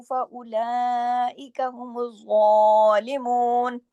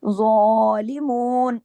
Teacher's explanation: ज़ा के ऊपर मोटा भी करना है, तशदीद भी है, डबल ज़ा है , और ये क्या होगा, मोटा भी पड़ा जाएगा, और एक